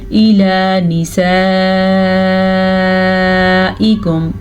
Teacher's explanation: इसकी मिकदार तकरीबन 4 से 5 सेकंड तक है, यानी कि ये 5 हरकत अरबिया के मुताबिक लंबी की जाती है। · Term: बड़ी वाली मद